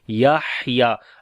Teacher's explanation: याहया, लाम को लंबा करेंगे, अलिफ मद्दा है यहाँ पर, याहया, हा के ऊपर सांस को जारी करेंगे, सिफ्ते हम्स होगी